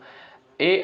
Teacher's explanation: ए वर्ण का जो है इसका उच्चारण होता है कंठ और तालु से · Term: कंठ तालव्य